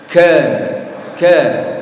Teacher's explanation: kalau Kaf itu pangkal lidah atau lidah bagian belakang ditemukan dengan langit-langit berdaging dan ber tulang